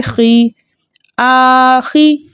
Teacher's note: وَبِالْيَوْمِ خا کے نیچے زیر ہے، زیر کو بغیر کھینچے بغیر جھٹکا دیے متوسط طریقے سے پڑھیں گے